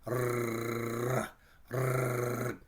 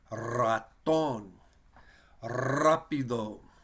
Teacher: The letter R in Spanish, if it's the first letter of the word, they usually roll it or trill it. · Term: trill the R